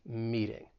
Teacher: the t in meeting i am going to pronounce it with a flap t which is more of like a soft d sound